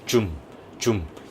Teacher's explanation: 치아 앞쪽에서의 진동 소리는 없는 거죠. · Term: 한국어의 지읒 소리